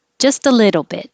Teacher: the t's change to d's in little